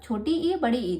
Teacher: इ वर्ड जो है उसका उच्चारण स्थान तालु है